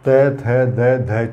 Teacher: जीवा का जो आगे वाला भाग है वो नीचे वाले जो दांत है उन दांतों पर रुकती है